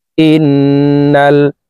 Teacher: হরকতওয়ালা হামজাটি তাসদীদওয়ালা নুনের সাথে 3 সেকেন্ড পরিমাণ গুন্নাহ করে ধরে রেখে পড়ব। ইন নুন লাম জবর নাল।